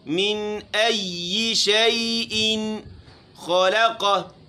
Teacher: من ای شیئن خلقہ ان میں غنہ نہیں کرنا ہے، غنہ زمانی نہیں کرنا ہے، اس کو لمبا نہیں کرنا ہے. خلقہ خا موٹی لام باریک قاف موٹا.